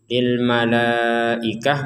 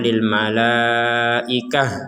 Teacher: kalau tidak kuat berhenti di lilmalaikah menjadi ha